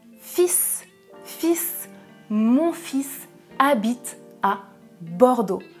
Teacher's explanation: Dans le premier exemple, attention, je ne prononce pas le L.